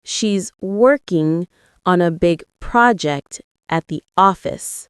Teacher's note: Stress the words working, big, project, and office.